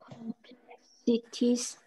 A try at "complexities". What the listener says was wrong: Good girl. Complexities. Well done.